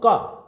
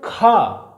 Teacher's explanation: ख को बोलने में क्या है ज्यादा स्वास वायु की आवश्यकता है ज्यादा ताकत लगानी पड़ रही है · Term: महाप्राण